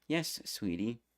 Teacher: In this case, you likely heard a higher yes, and the first syllable of sweet was lower than the last syllable, T.